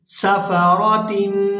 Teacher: یہاں تنوین پر اخفا کریں گے، آواز ناک کے اندر جائے گی